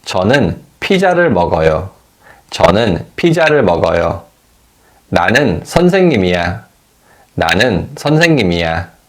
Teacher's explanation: In positive statements, the tone falls at the end of the statement.